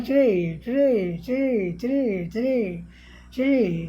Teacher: ट ड के बाद र आता है तो वह आंशिक रूप से अघोष, अघोष का मतलब जिसमें कंपन न हो, घोष का मतलब जिसमें यहाँ कंपन हो। · गले में कोई कंपन यहाँ स्वर तंत्र में नहीं हुआ है इस आर के उच्चारण में। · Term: अघोषीकरण